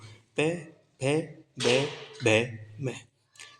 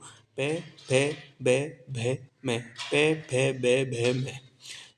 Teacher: आपके दोनों होठ है ना ये आपस में लग रहे हैं, यहीं से आवाज़ आ रही है · दोनों होठों से आती है आवाज़ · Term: ओष्ठ्य ध्वनि